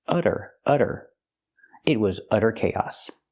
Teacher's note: we see the Double T pronounced as a fast D because it's between vowels